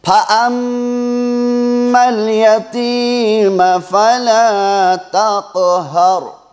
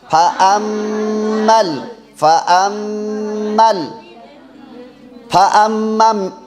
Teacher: ایک الف کے برابر ناک میں سے آواز کو چھپانا ہے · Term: گننا